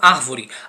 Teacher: a palavra árvore contém a sílaba forte no início da palavra a primeira sílaba é a sílaba forte né que é árvore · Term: proparoxítonas